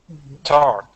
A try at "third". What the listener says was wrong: So try doing that TH sound. I'm hearing turd. Are you sticking your tongue between your teeth?